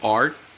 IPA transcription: ɑrt